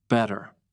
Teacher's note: In American English, T is not always strong. Sometimes it sounds like a soft D. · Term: American T sound